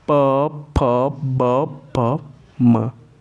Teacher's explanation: जब हम प का उच्चारण कर रहे हैं तो यहाँ पे दोनों ओष्ठ क्या हो रहे हैं, दोनों ओष्ठ सट रहे हैं, तभी प का उच्चारण संभव है। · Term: प वर्ग